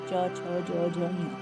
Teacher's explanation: जीभ ऊपर तालु को छूती है। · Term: तालव्य